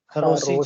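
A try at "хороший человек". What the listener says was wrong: खरोशी चिलावे, चिलो नहीं चिला, चिलावे।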